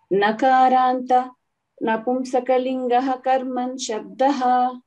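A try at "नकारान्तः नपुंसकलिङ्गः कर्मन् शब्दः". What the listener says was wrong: Nakarantaha Napumsakalingaha or Nakarant uh, Nakarantaha. Uh, either you, if you want, if you are telling together, you have to not give the gap. Nakaranta Napumsakalingaha Karman Shabdaha.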